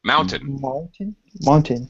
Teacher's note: they say Mountain the same way you do in in English we say Mountain the second syllable is very reduced just quick t mountain basically like that yeah Mountain yeah quick